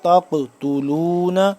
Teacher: معهم قل فلم تقتلون انبیاء اللہ تق تا قاف زبر تق قاف کو موٹا پڑھیں گے اور یہ قلقلہ بھی ہوگا